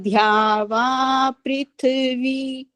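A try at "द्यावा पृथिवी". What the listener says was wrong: एक ही शब्द में दो गलतियां हुई हैं, लास्ट से जो पहला सेकंड लास्ट था वो ध्यावा बोला और पृथ्वी बोला, दोनों गलत है।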